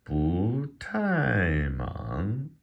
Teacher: when two fourth tones come together, the first one becomes a second tone